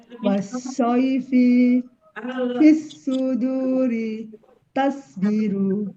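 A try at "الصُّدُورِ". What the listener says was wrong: Ya, shotnya kurang tebal ya, Bu. Ditebalkan lagi. Wasaifi fil ditempelkan ke langit-langit lidahnya, Bu.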